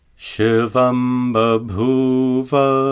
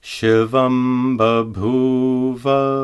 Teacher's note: Notice that the anuswara is pronounced as a labial ma.